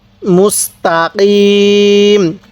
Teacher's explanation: কফটা উচ্চারণের সময় গলায় একটু ধাক্কা দিব